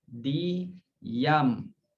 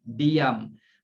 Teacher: Dalam tulisan tak ada pun Y. Tapi bila sebut, macam ada Y. Diam. Yam, Y itu seumpama huruf Ya.